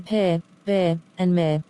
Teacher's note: means both Two Lips comes together